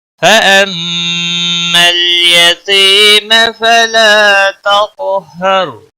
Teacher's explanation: میم مشدد پر غنہ ہوگا، لام کو ہلانا نہیں.